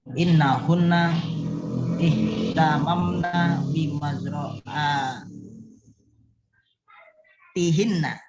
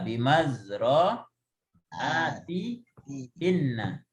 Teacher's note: Harusnya hunna. Cuma karena di sebelumnya kasroh maka bunyinya jadi atihinna.